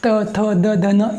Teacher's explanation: देखिए त थ द ध न, ये दांतों को स्पर्श करती है जीभ, इसलिए इनके उच्चारण स्थान होगा वो होगा हमारा दांत।